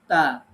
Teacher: যেমন তা জবর তা, ঠোঁটটা চেপে ধরা যাবে না, গোল করা যাবে না, খোলা থাকবে উভয় ঠোঁট